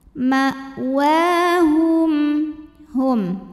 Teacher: Wa mad tabi'i muqaddar karena wawu berbaris fathah yang berdiri. Maka wawunya panjang 2 harokat.